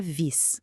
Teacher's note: No neerlandês é mais suave, é quase um sopro, um som que fica ali no meio do caminho entre o nosso V e o F. Pensa na palavra vis, que significa peixe. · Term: letra V